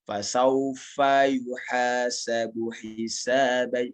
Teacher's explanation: Ini fa-nya agak ana panjangi, tapi intonasinya intonasi satu harokat.